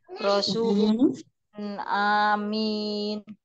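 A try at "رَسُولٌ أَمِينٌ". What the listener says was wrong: A-nya pendek, hamzahnya pendek.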